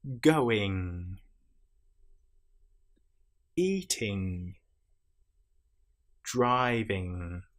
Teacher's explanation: You will feel the vibration in your nasal cavity again in the middle of your head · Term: nasal sounds